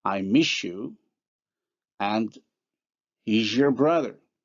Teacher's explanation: for s and z, how they become respectively the palatal-alveolar fricative sh and j